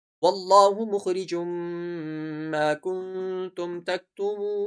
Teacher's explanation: نون میں ہم تھوڑا سا کھینچیں گے کیونکہ واو سے پہلے، واو ساکن سے پہلے پیش ہے، تو یہاں پر واو مدہ ہے۔